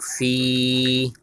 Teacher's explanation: یا مدہ ہے، یا ساکن سے پہلے زیر ہے تو یہاں آپ نے ایک الف کی مقدار کھینچ کے پڑھنا ہے